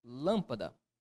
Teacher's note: aquela palavra cuja sílaba tônica ocupa a antepenúltima posição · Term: proparoxítona